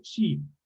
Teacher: se pronuncia con una I un poquito más alargada, con sheep.